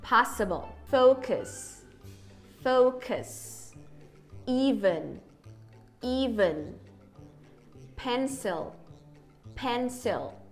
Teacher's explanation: ele tá sempre unstressed e com a língua e os lábios em posição neutra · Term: schwa